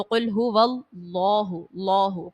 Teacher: اللہ کے لام سے پہلے جب زبر اور پیش ہو تو اس کو پر پڑھا جاتا ہے ، تو قل هو اللہ، اللہ پر پڑھیں گے، موٹا پڑھیں